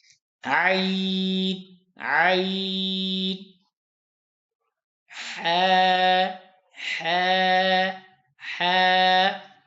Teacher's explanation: اور عین ہا اور حمزہ حلق کے درمیان سے ادا ہوتے ہیں